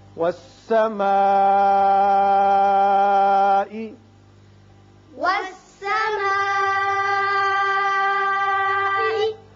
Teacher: بڑا مد ہے، مد متصل، 5 حرکات لازمی طور پر آپ کھینچیے